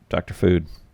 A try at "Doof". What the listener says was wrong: F on the end. It's Doof.